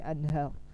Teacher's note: ada nun sukun dan tanwin bertemu huruf ha misalnya, kita baca dengan bacaan yang jelas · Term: izhar